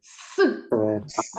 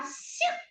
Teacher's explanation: с с вимовляємо твердо а с це вимовляється м'яко